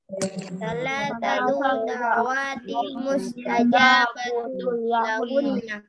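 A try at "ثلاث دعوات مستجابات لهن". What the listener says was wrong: Ini da'awatin panjang ya, nggak boleh dibaca da'awatin. Da'awatin tidak didengungkan. Ya, nggak usah didengungkan ya teman-teman ya. Nggak usah da'awatin mustajabatun, nggak usah dibaca gitu.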